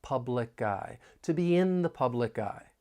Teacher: We can link the final consonant sound in public with the beginning vowel sound in I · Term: linking